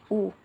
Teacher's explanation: ऊ को जब हम बोलते हैं तो उसमें हमारे जो लिप्स होते हैं वो थोड़े छोटे होकर के गोलाकार शेप में आ जाते हैं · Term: व्रतमुखी